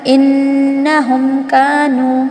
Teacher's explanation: میم کی آواز کو ظاہر کرنا ہے، بالکل غنہ نہیں ہونا ہے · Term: اظہار شفوی